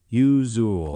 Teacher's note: It's not a hard z. It's that soft z, like in measure.